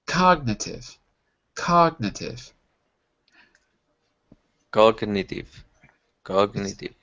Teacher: the G is a hard G, but there's no eh after the G. It's not cog.